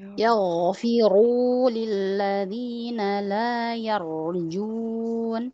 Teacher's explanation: Ra tebal, ghain juga tebal ya.